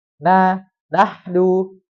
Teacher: ketika mengucapkan na itu ada gunahnya tapi kurang sekali sedikit